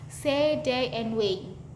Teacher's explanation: A as in say in IE, this diphthong represents the mid-front vowel sounds. It starts with a mid-front position and glides towards a slightly more open mid position.